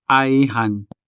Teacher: This word has two syllables, I and han. The first syllable is a diphthong I. And this diphthong is a standalone syllable because it does not attach itself to a consonant.